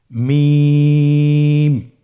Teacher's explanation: দুই ঠোট চেপে ধরে আমরা উচ্চারণ করব